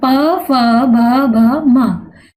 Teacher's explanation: और ओष्ठ से प। अब बिना होठ हिलाए प वर्ग बोल कर देखें, नहीं बोल पाएंगे क्योंकि इनका जो स्पर्श हो रहा है वो ओष्ठ से हो रहा है